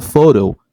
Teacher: photo, it's stressed in the first syllable